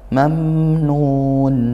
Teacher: mam nun mim sukun bertemu nun atau bertemu tidak bertemu mim tidak bertemu ba maka izhar syafawi mim sukunnya dibaca jelas